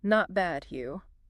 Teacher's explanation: by just saying you with a rising intonation, you've closed the social loop.